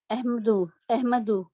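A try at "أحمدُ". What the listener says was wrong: احمدو. اس کو کیوں ہم ایک دمہ لگا رہے ہیں؟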